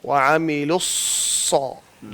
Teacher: زبان کو پیچھے لے جائیں, دانتوں کو بند کر کے, اسی طرح جیسے سین نکلتی ہے بالکل ویسے صاد نکالتے ہیں